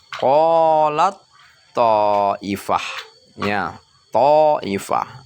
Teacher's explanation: huruf ta, ya, itu dia tidak kedengaran bunyinya, langsung dia dimasukkan ke huruf to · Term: idgham mutajanisain